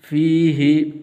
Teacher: ہا کے نیچے زیر ہے، کھڑی زیر نہیں ہے، ہا کو لمبا نہیں کرنا، فِيهِ ایسے نہیں پڑھنا۔